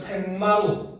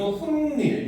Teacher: 뒷말의 첫 소리 모음 앞에서 니은 소리가 덧나는 거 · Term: 니은이 첨가되는